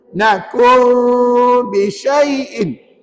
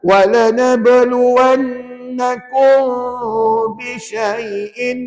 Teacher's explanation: mim mati jumpa ba, sama ada perempuan nak tutup bibir ke renggang bibir terpulang. Bergantung kepada kemampuan masing-masing, ya. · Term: ikhfa syafawi